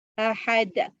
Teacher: Sifat huruf qalqalah. Jadi dal, ni akhir-akhir ni lah ahad, samad, yulad, tu qalqalah dia panggil, ada pantulan